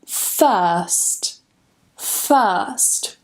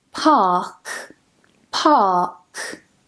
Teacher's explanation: the R sound is silent if we have a consonant sound coming after it